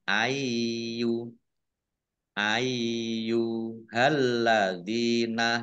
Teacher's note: Dibaca panjang boleh 5, boleh 2 harokat. Yaknya dibaca double, ada tasdidnya